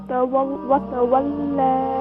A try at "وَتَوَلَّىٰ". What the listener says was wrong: Lam light, more light.